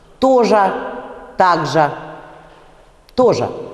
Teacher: Я произношу на конце в заударном слоге просто «ер» сейчас.